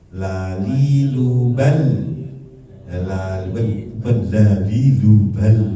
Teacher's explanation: Yang bedanya juga la dari la karena dia ya inhiraf, punya sifat inhiraf ya, keluarnya dari samping